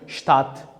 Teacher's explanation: S bilan t ham agarda so'z boshida keladigan bo'lsak, buni ham ko'pchilik holatlarda sht kabi talaffuz qilamiz.